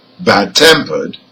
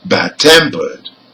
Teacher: the stress is on the second part so for adjectives which are compound nouns the stress is on the second part